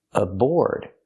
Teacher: The A is pronounced as a schwa.